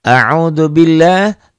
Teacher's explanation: lafaz Allahnya dibaca tipis, tarqiq